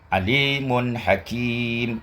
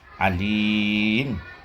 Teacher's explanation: Ketika wasal bunyi nun itu ada. Sedangkan ketika waqaf tuqra waqfan alim. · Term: tanwin